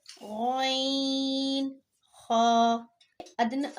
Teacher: یہ ادنی حلق سے ادا ہوتے ہیں، یعنی حلق کے اس حصے سے ادا ہوتے ہیں جو منہ کی طرف ہوتا ہے، یعنی کہ بالکل منہ سے نزدیک ہوتا ہے، اس سے یہ 2 حرف ادا ہوتے ہیں۔